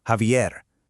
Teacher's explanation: It's got that strong kind of throaty H sound from the back of your throat. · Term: Jota